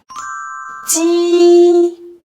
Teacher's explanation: raise the front of your tongue to the hard palate, then slightly pull back to form a gap. Air pushes out, causing the vocal cords to vibrate.